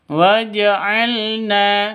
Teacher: laidanakum walna lakum [Musik] F waj'alna lakum waj'alna waj'al pendek ya waj'alna Na panjang dua ketukan